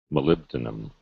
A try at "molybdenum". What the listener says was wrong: Molybdenum. Okay, so not E sound. Molybdenum.